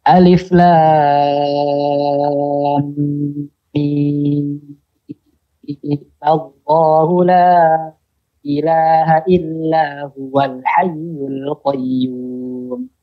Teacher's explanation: Yang kedua, menyambung alif lam mim dengan lafaz jalalah dengan memanjangkan mimnya 6 harokat dan menghidupkan dengan fathah. Jadi mimnya terakhirnya ada fathahnya.